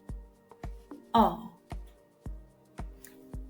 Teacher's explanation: this sound is very strong and your lips are very rounded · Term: back vowels